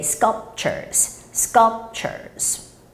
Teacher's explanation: And lastly, the word sculpture, it's not sculpture, all right? So you don't actually make that P sound. All you have to do is just close your lips for that P.